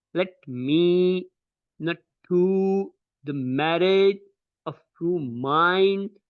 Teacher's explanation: the initial one will be unstressed, which will have a very low force on that particular syllable or word, and the second one will be spoken with the higher force, which will be called as a voiced syllable, like let me not to the marriage of true mind. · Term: iambic pentameter